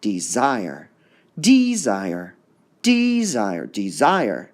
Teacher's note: we hear the desire part going up so it's d zire there are certain